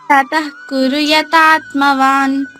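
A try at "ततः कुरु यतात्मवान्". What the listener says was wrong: Very good నాన్న.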